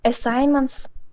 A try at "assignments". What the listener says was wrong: Yeah, no, you don't pronounce that G. Assignments. Yeah, that G is kind of almost a silent G in that word.